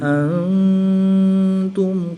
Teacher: نون ساکن کے بعد تا حروف اخفا میں سے ہے تو یہاں پر اخفا ہوگا، یعنی غنہ زمانی کر کے پڑھیں گے